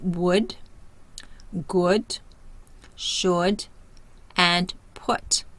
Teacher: Tongue is high back, the mouth is laxed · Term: short U